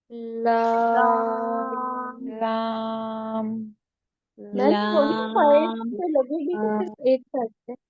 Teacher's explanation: यह हमारी जो जबान है जब ये इन चार दांतों से लगेगी मसूड़ों से लगेगी ठीक है इन चार दांतों के मसूड़ों से लगेगी तो अदा होगा लाम